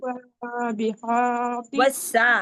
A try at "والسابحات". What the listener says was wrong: سا باریک کریں، والسابحات